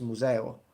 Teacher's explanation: and then in Italian it becomes museo, and we drop the m